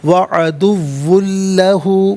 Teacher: واو پر دو پیش کی تنوین، اس سے بھی لام کے ساتھ ملائیں گے اور لام کی آواز کو ادا کیا جائے گا، یہاں پر بھی یرملون کا قاعدہ اپلائی ہوگا، وعدوٌ لہ، اور وقف کریں گے تو وعدوٌ لہ پڑھیں گے۔